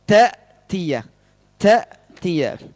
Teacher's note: Ini hamzah dari pangkal tenggorokan.